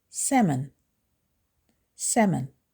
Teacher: The L is silent and you can ignore it completely.